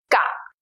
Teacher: It sounds something between the English K and the English G, like the K sound in category. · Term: Gaji